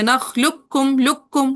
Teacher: اب جو کہتے ہیں ادغام تام ہوگا وہ تو کیا کریں گے، ڈائریکٹ باریک والے کاف پہ تشدید ڈالی اور موٹے والے قاف کو ڈراپ کر دیا